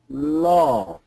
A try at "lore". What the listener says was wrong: when you're saying it, it sounds more like law.